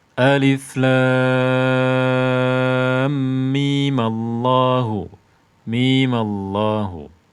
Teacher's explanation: Dia gugur dari enam harakatnya artinya tidak lagi dibaca enam harakat tidak lagi dibaca enam harakat karena dia dibaca sambung